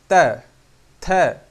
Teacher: फिर दंत, दंत में त, थ, जैसे ही त बोलोगे जीभ आगे दांतों पे चिपकेगी